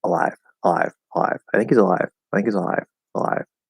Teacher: Um, but it is definitely possible to kind of just ignore that when you're speaking quickly or very lazily and just do a dark L or half L sound.